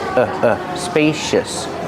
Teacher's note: Use a long a like pay and say spacious. The c makes a shh sound like shoes and show spacious. Use a relax sound at the end.